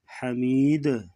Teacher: دال ساکن ہوگی تو یہاں پر قلقلہ کریں گے، آواز کو ہلا کے پڑھیں گے